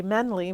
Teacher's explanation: when the tongue's fighting to get to the end it'll drop part of that long sound